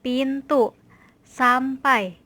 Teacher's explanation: Pada fonem P, yaitu bunyinya lepas, terdengar sebagai onset suku